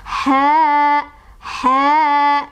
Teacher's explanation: Ha, ha-nya di sana kita ketemu sama mad thobii atau mad asli, sebabnya karena ada alif sebelumnya ada huruf berbaris fathah yaitu ha-nya berbaris fathah ya. Jadi dibacanya adalah dipanjangkan sebanyak 2 ketukan.